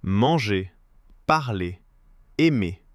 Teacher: manger just ends on the é sound, as if there were no R at all